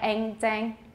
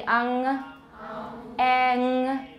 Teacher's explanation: 中文的肮脏, 换一个母音念, 可是后面的鼻音, 不要从 velar 换到 alveolar. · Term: velar nasal